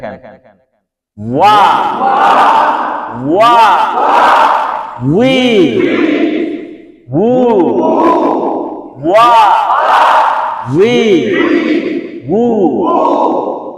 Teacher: আর ওয়াও যখন বলেন তখন কিন্তু ঠোঁটটা গোল করতে হয় · ওয়াও উচ্চারণ হয় ঠোঁট থেকে।